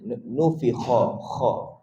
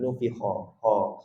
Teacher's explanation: Kha adalah huruf yang perlu kita sebut dengan sedikit getaran pada kita punya halqum lah. Kha ada sedikit getaran.